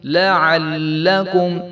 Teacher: وَإِذْ آتَيْنَا مُوسَى الْكِتَابَ وَالْفُرْقَانَ لَعَلَّكُمْ تو بعض لوگ جو ہے اس کو لَعَلَّكُمْ کر دیتے ہیں تو عین کو جب ہم نے لام کے ساتھ ملانا ہے تو اس کو ہم نے لمبا نہیں کرنا